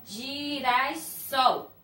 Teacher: Sol é a última sílaba tônica. Então, ela é oxítona, tá?